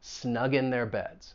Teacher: Now the next phrase, snug in, we're definitely going to link that final G sound with the vowel sound in